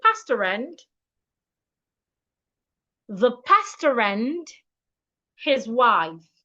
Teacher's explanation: So for me to read this sentence correctly, I need to link the R in pastor and the R in and. It means that pastor and the word and should be pronounced as one word. So instead of saying pastor and, I should say pastor and, the pastor and his wife.